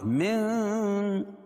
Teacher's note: نون ساکن کے بعد با آئے تو نون ساکن کو میم سے بدل کر غنہ اور اخفا کے ساتھ پڑھتے ہیں اور اس کو اقلاب کہتے ہیں۔